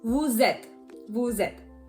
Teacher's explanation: Normally when you say vous, we don't really pronounce the S. But because the next word that follows it has a vowel, we pronounce the two words together. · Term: liaison